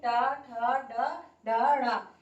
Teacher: इसमें हमारी जो जबान है, जो हमारी जीभ है, वो एकदम से झटके से मूर्धा को स्पर्श करती हुई इन वर्णों को उच्चारित करती है। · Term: मूर्धन्य